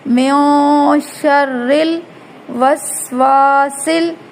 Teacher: میوں شرل، را کی نیچے را پر جب زیر ہو یعنی را زیر کی حالت میں ہو تو را باریک پڑھی جاتی ہے. میوں شرل وسواسل، شین را زبر شر، را لام زیر رل، شرل وسواسل، سین میں سٹی کی آواز پیدا کرنی ہے، وسواسل.